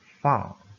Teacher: Oral passage is blocked by pressing the back of your tongue against the soft palate.